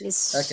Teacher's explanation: لأن الحاء فيها صفة الهمس وهي ساكنة، فلا بد أن نظهرها ولا يعني تكون قريبة إلى حرف الهاء، لا نقول للسحت هكذا، لا نقول للسحت هكذا. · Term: حرف الحاء